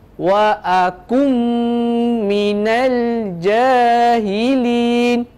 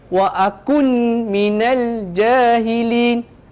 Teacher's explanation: Wa akun tu maksud dia dah jadi izhar, dah jelaskan nun tu. Kita bukan nak izharkan dia, kita nak masukkan nun ke dalam huruf mim tersebut. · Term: idgham ma'al ghunnah